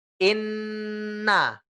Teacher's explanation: Nah, kalau al-khayshum, ya al-khayshum itu rongganya rongga hidung. Jadi anginnya atau getarannya keluar lewat hidung. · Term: nun ditahan